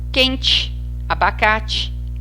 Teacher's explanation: algumas palavras que terminam com a letra e são pronunciadas como se tivessem a letra i. Quente, abacate, Haiti, abacaxi.